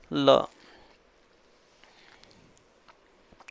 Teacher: जीव तालु को तो छुए ना, बट साइड से गालों से हवा निकल जाए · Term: पार्श्विक